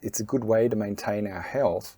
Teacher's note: The T in the to becomes a D. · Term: assimilation